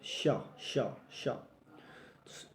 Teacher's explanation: इस श का जो उच्चारण स्थान है श तो ये है आपका तालव्य वर्ण